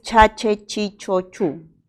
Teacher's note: Este es un sonido africado y es palatal porque la lengua se va a la zona del paladar y es sordo porque no presenta vibración de las cuerdas vocales